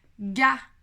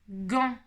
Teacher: on passe d'une voyelle orale qui n'est pas arrondie pour le coup à au son en